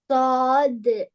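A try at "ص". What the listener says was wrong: சா அல்ல, சுவா. வாய் ஃபுல்லா செல்லணும், தடிப்பமா செல்லணும். சுவாது. சுவாது.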